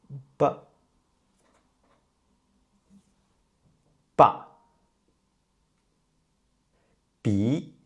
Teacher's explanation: B is an unaspirated consonant, and B is non-voiced.